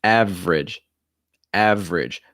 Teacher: it goes right from that v into that r so another consonant cluster here vr · So that first E is not usually pronounced.